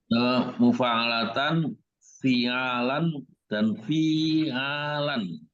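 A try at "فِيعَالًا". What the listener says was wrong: Fi panjang ininya nih. Kan ini panjang-panjang.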